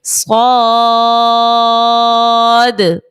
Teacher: مد لازم کو جو ہے وہ 6 حرکت کی مقدار تک کھینچ کر پڑھنا ہوتا ہے